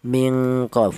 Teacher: letaknya bertempat di pangkal lidah atau lidah bagian belakang